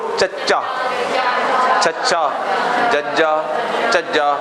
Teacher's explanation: ਜੀਭ ਤਾਲੂਏ ਨੂੰ ਲੱਗਦੀ ਹੈ, ਫੇਰ ਹੀ ਬੋਲਿਆ। ਹਵਾ ਦੀ ਰੋਕ ਹੈ ਜਿਹੜੀ ਉਹ ਤਾਲੂਏ ਤੇ ਹੈ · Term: ਤਾਲਵੀ ਵਿਅੰਜਨ